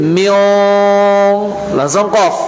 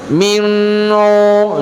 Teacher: ketika kita mengucapkan min, langsung otomatis kita itu mulut posisi dalam huruf qaf. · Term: Ikhfa